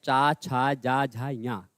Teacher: जब हम पढ़ते हैं च, छ, ज, झ, ञ कहां आता है? तालु में।